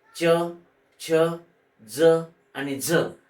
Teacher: या चार व्यंजनांचा उच्चार दोन प्रकारे होतो एक तालव्य आणि दुसरा दंत तालव्य